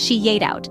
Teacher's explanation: It's commonly pronounced as she ate out. The Y sound intrudes to connect she and ate, making the phrase flow better. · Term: intrusion